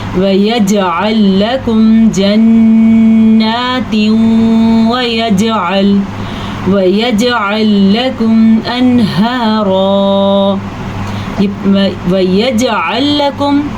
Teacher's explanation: یہاں پہ پھر کلکلا ہو رہا ہے کیونکہ جیم حروف کلکلا میں سے ہے